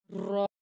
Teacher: ज़बान की नोक, सामने वाली जो नोक है, मुकाबिल तालु को लगेगी तो रॉ अदा होगा। रॉ अदा करते हुए ज़बान में थोड़ी सी थरथराहट पैदा होगी।